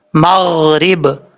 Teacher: بعض اوقات لوگ یہ غین ساکن کو پڑھتے ہوئے قلقلہ کر جاتے ہیں، ایسا نہیں کرنا